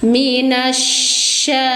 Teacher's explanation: Minasya, alif lam syamsiyah, alif lamnya dianggap tidak ada, langsung masukkan suara nun ke shin. Minasya, tafasyih, sebar udara dari tengah lidah, panjangkan satu ayunan, mad tabi'i muqaddar.